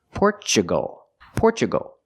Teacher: we pronounce a t with the chch sound because we have Tu we usually do that when you have Tu in the middle